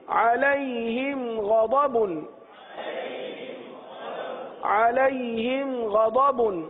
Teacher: اظہار شفوی کا قاعدہ ہوگا، یعنی گنہ نہیں کریں گے